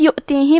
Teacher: حمزہ کی ادائیگی حلق کے نیچے والی حصے سے ہے